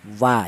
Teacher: huruf wawu itu dihasilkan dari kedua bibir yang renggang. Tidak boleh rapat. Kalau rapat malah salah ya.